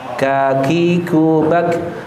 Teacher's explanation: Kalau ko ini tebal isti'la dia naik ke atas, ka ada hamesnya seperti ada udaranya.